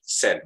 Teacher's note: Hampir sama pengucapannya dengan sedih. Said. Jadi I-nya tidak diucapkan.